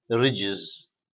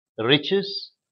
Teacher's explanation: Between vowels, j is voiced, ch is voiceless.